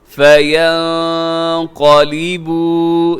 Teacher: یہاں نون ساکن کے بعد قاف ہے تو یہاں بھی کیا کریں گے، اخفا کریں گے